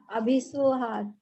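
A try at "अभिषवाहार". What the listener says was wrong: बढ़िया, अभीश्व नहीं है, अभीशव। सभी लोग, बहुत बहुत कम लोग हैं जो सही प्रोनाउंस करते हैं सूत्र में भी। और मैं बता बता के थक जाऊंगी, लेकिन जिनको वो बोलना है अभिश्व ही बोलेंगे। अभी शय पूरा है, वह पूरा है, पूरा है ना।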